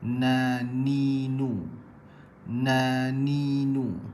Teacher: bahagian hujung lidah bertemu bahagian lelangit atas langit yang hampir ke gusi atas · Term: huruf nun